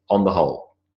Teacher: when I say on the whole it's almost simply one little sound